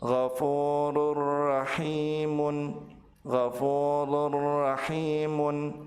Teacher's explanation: maka tanwin dilebur ke huruf ra tanpa ditahan dan tanpa disertai dengan guna. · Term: tanwin bertemu dengan huruf ra